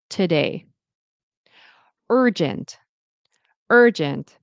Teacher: the main stress is on today, day, and urgent